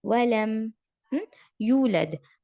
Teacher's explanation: یہاں پر بھی میم ساکن کے بعد یا ہے تو اظہار ہم کلیئرلی میم کو پروناؤنس کریں گے